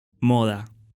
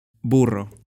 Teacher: Оба задних гласных огубленные, то есть губы вытягиваются вперед трубочкой.